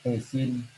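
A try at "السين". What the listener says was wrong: Sin bukan sa ya. As-sinu harful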